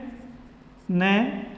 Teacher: जब इस न का उच्चारण करते हैं तो अपनी जो जिह्वा है वो घूम करके ऊपर वाले दांतों से टकराती है, तो ये कहलाती है दंते कहलाती है। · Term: दंते वर्ण